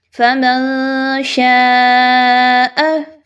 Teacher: نون ساکن کے بعد شین ہے اور شین حروف اخفا میں سے ہے، تو اس وجہ سے یہاں پر نون کو چھپاتے ہوئے پڑھیں گے، کلیئر نہیں پڑھنا